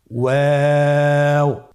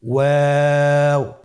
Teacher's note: 2 ঠোঁট গোল করে মাঝখানে ফাঁক রেখে হরফটি উচ্চারণ করতে হবে।